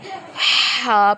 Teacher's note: ہا حلق کے درمیان والے حصے سے ادا ہوگا